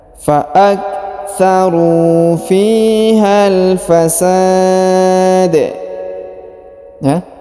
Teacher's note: Huruf sa dipanjangkan boleh 2, boleh 4, boleh 6 harokat karena di depan huruf sa terdapat alif sebelum huruf pemberhentian, dan huruf pemberhentian huruf da disukunkan dan dipantulkan ya.